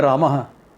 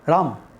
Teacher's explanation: That A is swallowed in North India.